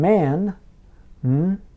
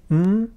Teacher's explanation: involves both lips blocking the air from the mouth